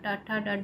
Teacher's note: मूर्धा और जीभ के स्पर्श से बोले जाने वाले वर्ण मूर्धन्य कहलाते हैं।